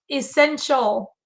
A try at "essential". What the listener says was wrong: There's no W. There's no W.